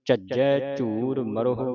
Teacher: ਝਜੈ ਅਧਕ ਲਾ ਕੇ ਕੱਸ ਕੇ ਬੋਲਣਾ ਇਹਨੂੰ